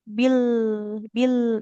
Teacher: lam sukun tak boleh tak boleh memantul. Jadi, pastikan dia ujung lidahnya, tepi lidahnya ya, tepi lidah yang sini tetap dia menempel ke langit-langit.